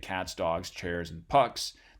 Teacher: they're matching in terms of their voicing quality that's a form of voicing assimilation